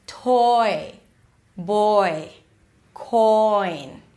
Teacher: here we move from the o sound so you need to drop your jaw a little bit to the e as in sit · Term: oi as in toy